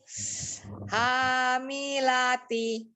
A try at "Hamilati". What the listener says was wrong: Saya jelaskan nih kenapa tadi kok sama-sama ya sama-sama la, tapi kenapa dia bisa kurang sempurna seperti ini. Umi bacanya pertama hamilati, hamilati. Dilihat bentuk mulutnya. Hamilati, lanya tidak dibuka la, begitu kan? Ya, maka itu dia walaupun dibacaan panjang, kenapa dia kurang jelas bacaannya? Karena ismamul harokatnya kurang, bukan